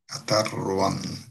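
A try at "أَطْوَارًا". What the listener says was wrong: র একটু জোরে যায়, একটু লম্বা হয়ে যাচ্ছে, হ্যাঁ? আতারওয়ান রতে কোনো টান নেই।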